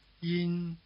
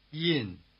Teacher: The contrast between the high tone and the falling tone should be clear since one stays high and one starts high but drops sharply to the bottom.